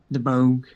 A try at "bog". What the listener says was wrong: No, there's no. You don't. There's the G is silent.